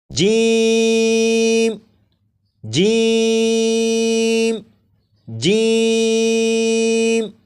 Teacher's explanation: جیم کو 3 الف کے برابر کھینچ کر پڑھیں گے، جیسے جیم جیم جیم، 4 مرتبہ پڑھے گا۔